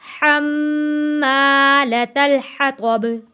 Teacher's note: मीम तशदीद वाला है, यहाँ पे मीम के ऊपर गुन्ना करेंगे।